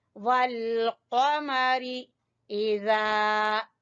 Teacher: जाल जबान की नोक और सामने वाले दो दांतों के सिरे